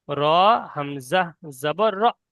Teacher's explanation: এখানে রয়েছে হামজা কফ জের ই র হামজা জবর র এই র হামজা জবর র মানে হামজার উপর সাকিন এসছে সেইজন্য একটু ঝাটকা হবে